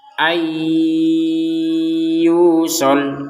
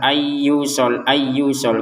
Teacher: Kalau sekedar ayus ayusol kan tidak ada dengungnya. Jadi fokus di dengungnya itu di rongga hidung kita itu ada dengungan